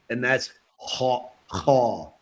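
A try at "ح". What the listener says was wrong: Ha. Good.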